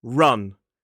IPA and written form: rʌn (run)